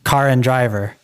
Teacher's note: in British English, you wouldn't pronounce an R at the end of a word unless there is another word following.